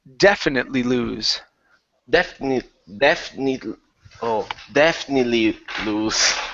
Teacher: The stress is at the very beginning of the word.